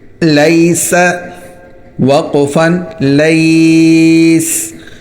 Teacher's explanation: سین سیٹی کی طرح نکلے گا، دانت ملا کر سیٹی نکالنی ہے۔